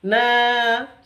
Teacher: 'Na' memiliki panjang dua ketukan. Karena ada huruf alif yang didahului oleh huruf fathah, 'na' seperti itu. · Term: mad asli